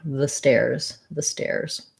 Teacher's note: And so adding letter S, it says Z after a voice sound. And the in stairs is going to sound like a schwa because we say the before words that start with a consonant sound.